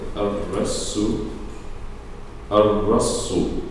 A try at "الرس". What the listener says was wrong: No. Ar-Rassu. First one is a sin.